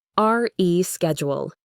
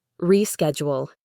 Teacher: The re part is stressed.